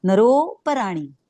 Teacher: म्हणताना त्याच्या आधीचा स्वर नर आणि नरो तो किंचित ओढायचा असतो त्यामुळे त्याचा उच्चार करताना नरोपराणी किंचित ओडण म्हणायचं त्याला व्याकरणाच्या पुस्तकात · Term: प्लुत